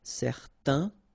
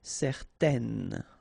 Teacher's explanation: certain, it's quite interesting because you've got this A-I-N together, and then they will produce this un sound. Okay, so it's nasal in your nose, un. Okay, if you add this at the end, then it will change the thing, and then you will pronounce it N.